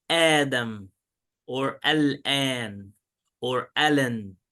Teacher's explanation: there is like the glottal stop in the beginning and then like a long vowel. So you have the glottal stop or the hamza and then like an alif.